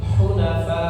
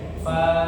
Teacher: Ya, karena di situ ada huruf hamzah ya, maka dikasih namanya istilah tajuknya namanya nabr. Naber itu adalah tambahan volume suara ya. Suaranya naik ya